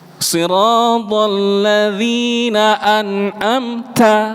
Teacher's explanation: ketika ada huruf ta disukunkan itu harus betul-betul terdengar suara hamesnya. Bahkan ketika hidup pun itu hamesnya keluar sekali.